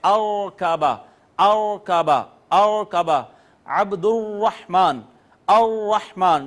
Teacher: تو را میں ایک ہلکی سی ارتعاش ہوتا ہے، کپکپاہٹ ہوتی ہے اور تھرتھراہٹ ہوتی ہے، اس کو کہتے ہیں تقریر۔ · آپ را کو ادا کرتے ہیں تو اس میں آواز جو ہے وہ تھوڑی کپ کپاہٹ کے ساتھ نکلتی ہے، تھوڑی تھر تھراہٹ کے ساتھ نکلتی ہے